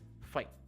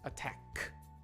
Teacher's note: See how that final O sound doesn't appear in natural English speech. So really, you don't want the final O sound of to, you just want the T sound